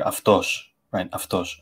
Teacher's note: the S sound is sort of in between my English S and my English SH